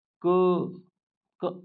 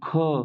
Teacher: जैसे क अल्पप्राण ख क से ज्यादा ताकत लगी ख में। तो महाप्राण ज्यादा हवा ज्यादा वायु की आवश्यकता हुई। प्राण मतलब वायु होता है।